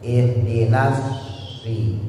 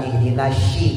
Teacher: Jadi bukan ihdinasyi, kalau syi itu shin. Ya, kalau sod dia punya sifat namanya taswir, suara seperti siul burung atau disebut juga sofir, suara seperti seruit.